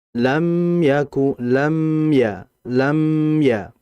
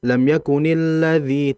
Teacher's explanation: Karena huruf lam itu bersi ee huruf mim mohon maaf huruf mim di situ bersifat tawassut. Dia punya sifat tawassut ya yang artinya mengalir tapi tidak begitu lama sehingga ditahan.